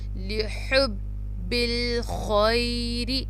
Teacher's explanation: را کے نیچے زیر ہے تو ہم را کو باریک پڑھیں گے اور شارٹ پڑھیں گے، لمبا نہیں کریں گے کیونکہ صرف زیر ہے، اس کے ساتھ یا نہیں ہے.